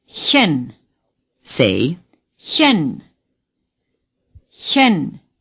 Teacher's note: the CH is similar to the way we pronounce the beginning sound in human or huge. Just breathe out a little more forcefully.